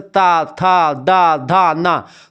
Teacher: इसमें जीभ जा करके हमारे दांतों को टकराती है, तो दंत हो गया